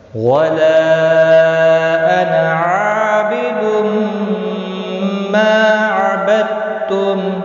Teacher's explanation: مد منفصل ہے، 3 الف کے برابر کھینچ کر پڑھیں گے